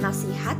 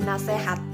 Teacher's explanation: Bunyi vokal I menjadi E. Contohnya itu seharusnya dia itu kata nasihat namun dilafalkan menjadi nasehat. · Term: perubahan fonem vokal